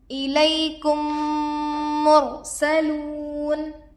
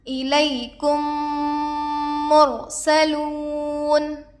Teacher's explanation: میم کو میم سے ملا کر گنہ کے ساتھ پڑھا جائے گا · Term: ادغام شفوی